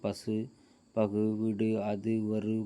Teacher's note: முற்றுகரம்னா முழுமையாக தன்னுடைய உகரத்தினுடைய மாத்திரை அளவு ஒலிக்கிறது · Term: முற்றியல் உகரம்